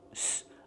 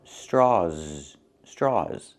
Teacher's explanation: I cannot say straws for the last sound. I need a Z sound.